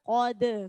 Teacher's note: Qad, jangan tebal. Jadi qofnya huruf tebal, dalnya huruf tipis. Jadi dalnya jangan ikut tebal.